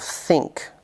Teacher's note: the tip or blade of the tongue touches or comes very close to the top front teeth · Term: Dental